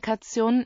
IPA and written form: ˈkati̯oːn (Kation)